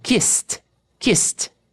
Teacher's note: Kiss. Som de S. Não vibra.